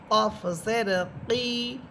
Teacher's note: জিব্বার গোড়া উপরে তালুর সাথে লাগবে,